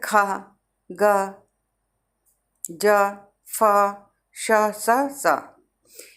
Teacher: घर्षण माने रगड़ती हुई। इन व्यंजनों को बोलने से वायु मुख से घर्षण करती हुई निकलती है। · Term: घर्षण व्यंजन